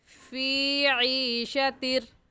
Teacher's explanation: क्योंकि या साकिन से पहले ज़ेर आ गया, तो अगर या साकिन से पहले ज़ेर आ जाए तो उसे या मद्दा कहते हैं, और ये कायदा हम नूरानी कायदे की तख्ती नंबर 8 में पढ़ चुके हैं। तो और या मद्दा को एक अलिफ की मिकदार खींच कर पढ़ते हैं, ना इससे कम और ना ही इससे ज़्यादा